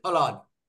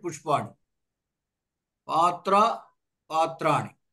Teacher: అంటే మూర్ధన్యం అంటాం దంత్యము మూర్ధన్యంగా మారుతోంది